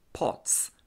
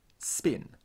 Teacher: distinguish the aspirated p in pots from the unaspirated p in spin